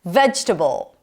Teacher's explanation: Primary stress is on the first syllable, not vegetable.